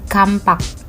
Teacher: pada kata kapak, bunyi M disisipkan di tengah kata menjadi kampak. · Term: Epentesis